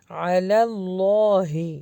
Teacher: اللہ کے نام کو موٹا کر کے پڑھنا ہے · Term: حرف جلالہ